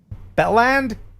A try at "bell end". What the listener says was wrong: Yeah, BELLEND. With the emphasis on bell, not on end. Bell end.